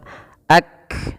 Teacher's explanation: Syiddah artinya, maaf, menahan suara, ak. Lihat, saat kamu berhenti, suaranya seperti tertahan, ak. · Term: syiddahnya